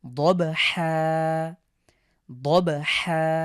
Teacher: এখানে দুই জবরের পরে ওয়াকফ করার কারণে আমরা এখানে এক আলিফ টেনে পড়ছি